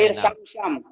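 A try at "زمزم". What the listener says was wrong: Zam-zam, bukan sam-sam. Bukan. Zam-zam. Pakai Z. Nah, Bapak Z-nya ke S.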